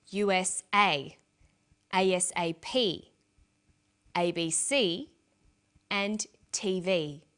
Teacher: each letter in the abbreviation is pronounced separately but the last letter is pronounced more strongly because it carries the primary stress